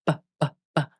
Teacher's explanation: Notice how the lips come together and block the air completely before releasing the sound.